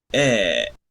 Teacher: Es una E abierta, un poco más abierta que la del español. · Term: E corta